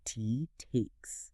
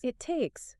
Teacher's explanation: Almost like one slightly longer held T sound. T takes. You don't necessarily say 2 separate T's.